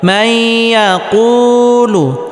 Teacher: নুন সাকিনকে ইয়ার সাথে গুন্নাহের সাথে মিলিয়ে পড়তে হবে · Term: ইদগামে বা গুন্নার